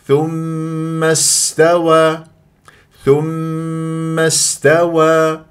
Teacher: غلط ثم ومس من الميم الى السين اللي لديه همزه وصل السين ساكنه تتجلى الصفات في الحروف الساكنه صفير جريان للصوت للنفس واسمع صوتها ما اقول ثم استوى وين السين غلط ثم استوى